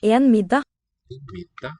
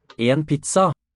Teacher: two syllable words like pizza, middag, they tend to have a tonal upstep to my ear.